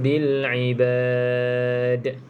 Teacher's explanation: iaitu mim mati bertemu dengan huruf ba mati ber dengan hurf Jadi rapat dan terus kena dengunglah dengung dua harakat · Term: bacaan iqlab